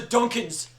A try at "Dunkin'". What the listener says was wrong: It's not Dunkin's, it's Dunkin'. Dunkin'. It's just Dunkin'.